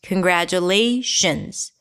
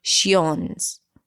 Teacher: The ION at the end is always reduced to a schwa.